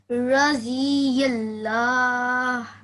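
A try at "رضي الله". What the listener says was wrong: So as opposed to the Z sound, this is a thick letter and it's pronounced D. D. Try not to say the dui is D. D.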